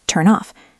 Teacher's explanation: The N in turn links to the O in off. Turn off. It sounds like one word.